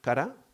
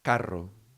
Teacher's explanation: The one where it taps, so the tongue taps, like cara, like the face, and one in which it rolls, it trills actually is the right word. In phonetics is called alveolar trill.